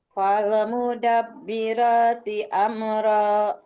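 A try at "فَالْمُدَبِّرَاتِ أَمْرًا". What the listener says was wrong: Ya, saya tadi dengar ada kol-kolah di lam itu masa fal. Fal mudab.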